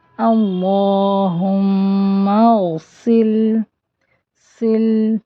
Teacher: سے الگ کرنا ہے، سا پڑھا تھا ہم نے نرمی سے، سین میں تیز سیٹی کی آواز ہوتی ہے